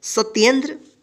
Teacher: सत्येंद्र, सत्येंद्र नहीं पढ़ेंगे, क्या पढ़ेंगे, सत्येंद्र। यानी आधा त है तो इस पे उच्चारण क्या होगा, बिना अ के साउंड का होगा, यानी जल्दी हो जाएगा